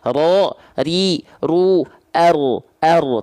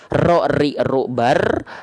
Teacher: Jadi getarannya dia sedikit saja, samar, tapi tetap walaupun sedikit tetap tegas, lugas dan jelas. Bukan berarti getarannya hilang. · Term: takrir